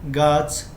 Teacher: গাছের ছ টা হচ্ছে অঘোষ মহাপ্রাণ